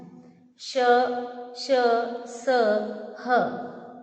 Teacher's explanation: ऊष्म व्यंजन का उच्चारण करते समय हवा मुख में रगड़ खाकर निकलती है